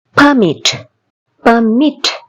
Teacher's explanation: மிட்ல எங்களுக்கு ஸ்ட்ரெஸ் கொடுக்குறோம்.